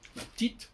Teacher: le E de petit, il ne s'entend pas